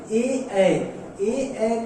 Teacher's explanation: ए का उच्चारण स्थान जो है कंठ तालव्य होता है। कंठ तालव्य, ए का उच्चारण स्थान कंठ तालव्य होता है।